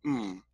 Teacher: the M is your two lips touching each other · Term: labial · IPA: /m/